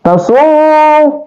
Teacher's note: ini adalah ra yang tafhim atau dibaca tebal